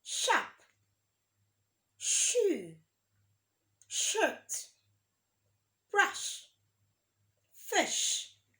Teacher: consonant cell that is voiceless because when will make the sound you won't feel any vibration of your throat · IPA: /ʃ/